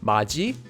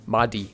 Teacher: whenever you have a digut before the sound e, the e sound becomes pronounced as ji.